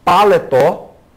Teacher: eu sei que paletó, a última sílaba é a sílaba tônica, por isso que está lá o acento.